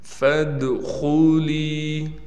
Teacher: دال پر قلقلہ بھی کریں گے، فا کو دال سے ملا دیں گے اور خا موٹی پڑھی جائے گی